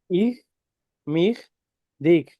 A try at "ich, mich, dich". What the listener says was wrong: একটু ইয়ে, হি বলি না, হি বলার সময় তালু লাগানো ট্রাই করবেন। ইহ, মিহ, ডিহ। ইহ কয়ের মতো উচ্চারণ করে ফেলেন। যদিও নেটিভ অনেক জার্মানরা কয়ের মতো উচ্চারণ করে, ইহ, মিহ, ডিক। কিন্তু স্ট্যান্ডার্ড যেই নিয়ম সেটা ইহ, মিহ, ডিহ। আবার বলছি, হি যেভাবে উচ্চারণ করি না, হি, ইংলিশের হি, হি উচ্চারণ করার সময় জিহ্বার অগ্রভাগ তালুর সাথে লাগানোর ট্রাই করুন। হি, হি, হি।